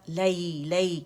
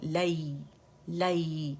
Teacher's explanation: یا لین ہے. یا سکون سے پہلے فتح آ رہی تو فتح کے لیے آواز ایک کاؤنٹ کے لیے اوپر جائے گی اور یا کو نرمی سے ادا کریں گے